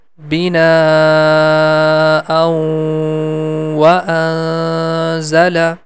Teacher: Also we have to hide the sound of Noon, and the sound becomes like wa anzala.